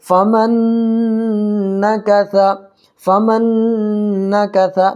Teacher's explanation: نون ساکن کے بعد یومین کے 4 حرفوں میں سے نون آ رہا ہے، اس لیے یہاں پر ادغام مع الغنہ ہوگا · دیکھیے ثا پر زبر ہے، اگر یہاں ہم وقف کریں گے تو یہ ثا جو ہے، ثا پر جو زبر ہے اس طرف زبر ہٹ جائے گا اور یہاں پر ساکن آ جائے گا